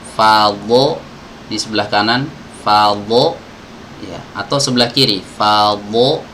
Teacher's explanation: harusnya dot ini dikeluarkan dari sisi lidah ya, pinggir-pinggiran lidah. Jadi kalau diumpamakan ini lidah, dot itu keluarnya dari pinggir-pinggiran ini.